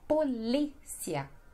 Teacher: Então a sílaba mais forte é no li, polícia.